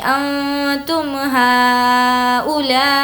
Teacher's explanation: ہا کو اور لا کو کھینچ کر پڑھیں گے کیونکہ دونوں پر مد ہے